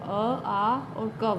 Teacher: अ, आ और क वर्ण, इनका उच्चारण स्थान कंठ से होता है, इसलिए इनको कंठ कहते हैं।